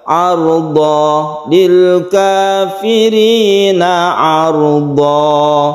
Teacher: tanwinnya fathatennya diganti dengan mad. Jadinya karena diganti ini menjadi fathah biasa dan diberi alif atau panjang satu alif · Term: mad iwad